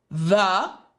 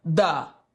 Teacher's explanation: There's air literally coming right between my teeth and my tongue.